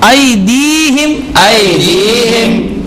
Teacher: یا ساکن سے پہلے دال کے نیچے زیر ہے تو یا مدہ ہوگا. اس کو ایک الف کی مقدار کھینچ کر پڑھیں گے